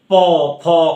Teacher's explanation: আমরা যখন উচ্চারণ করছি আবার যে ধরো প ফ, তাহলে শ্বাসবায়ু আমাকে বাধা সৃষ্টি করছে, এই দুটো ওষ্ঠের মধ্য দিয়ে বাধা সৃষ্টি করছে